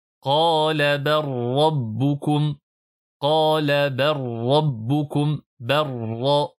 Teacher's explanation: On n'entend plus la lettre lam puisqu'il y a assimilation complète avec la lettre ra.